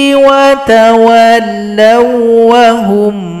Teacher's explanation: مِنْ فَضْلِهِ بَخِلُوا بِهِ وَتَوَلَّوْا وَهُمْ مُعْرِضُونَ Ini idgham mutamati lain, waw sukun digabung kepada huruf waw tasydid tanpa didengungkan